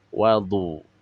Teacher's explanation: huruf isti'la yang berharokat dhammah. Tingkatan tafkhimnya tingkatan ketiga.